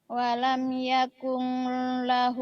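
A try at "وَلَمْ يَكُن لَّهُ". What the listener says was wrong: Jangan yakung, jangan yakung, jangan yakung. Yakul. Kan ada Yakul. Nggak ada Yakung, Yakul. Yakul.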